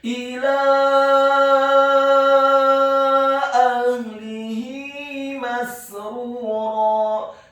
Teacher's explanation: Kata ahlihi, huruf alifnya dibaca tipis, fathah 1 harokat. Huruf ha-nya dibaca sukun dan tafkhim, tebal. Huruf lamnya dibaca tipis, kasrah 1 harokat. · Dan di atas harokat fathah huruf lam ada harokat bendera. Maka huruf lamnya dibaca tipis, fathah 4 sampai 6 harokat.